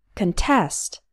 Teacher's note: the stress is on the second syllable so we pronounce the first part khun